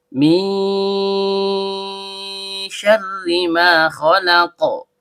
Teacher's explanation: Nun ujung lidah bertemu dengan langit-langit bagian tengah. Karena nunnya sukun bertemu dengan huruf syin yang keluar dari tengah lidah naik memantul ke langit-langit. Maka terjadi hukum bacaan ikhfa hakiki. Termasuk ikhfa hakiki ausad atau pertengahan. · Maka terjadi mad thobi'i panjang dua harakat dan setiap panjang keluar dari rongga mulut. · Huruf ro ujung lidah bertemu dengan langit-langit bagian belakang karena r-nya berharakat kasrah sehingga hukumnya tipis atau tarkik.